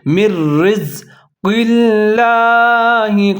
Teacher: نون حذف ہو جائے گا، میم اور را دونوں ملا کے پڑھیں گے، ان کو مضبوطی کے ساتھ پڑھیں گے ، را کو پھر زا کے ساتھ ملا کے پڑھیں گے،